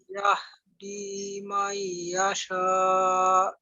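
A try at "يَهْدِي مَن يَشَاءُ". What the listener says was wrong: Ya, may-nya ditahan. May yasha. Kurang Kurang lama lagi. May yasha. May yasha.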